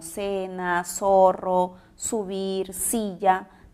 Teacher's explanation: es un fenómeno fonético en el cual las personas articulan constantemente el sonido s y no diferenciamos sonidos como la interdental z · articulan constantemente el sonido S, y no diferenciamos sonidos como la interdental Z. Por lo tanto, articulamos palabras como cena, zorro, subir, silla, de la misma manera. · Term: ceseo